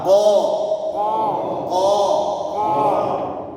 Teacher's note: o q o q ditebalkan dengan cara mengangkat pangkal lidah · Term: huruf q, huruf Qaf